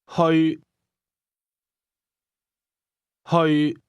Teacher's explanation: The Cantonese word to go is pronounced with a mid-level tone.